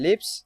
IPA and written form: lɪps (lips)